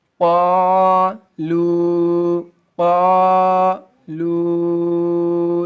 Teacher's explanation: چھوٹی مد ہے، چھوٹی مد میں 2.5 3 الف کے برابر کھینچیں گے۔